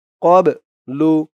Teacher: বাটা কলকলার হরফ ধাক্কা দিয়ে পড়তে হবে